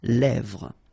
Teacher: Same thing here, final S not pronounced, and then this E accent grave here, it gives you the E, really open sound